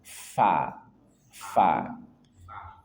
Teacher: dia hames maka keluar nafas